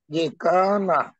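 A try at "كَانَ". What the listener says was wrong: কান এইভাবে না, মাত্রা একটু বেশি করতে হবে। মানে এখানে এখন অল্প করলে অল্প করাটা অভ্যাস হয়ে যাবে, শেষকালে পরে মা দিয়ে হবে না।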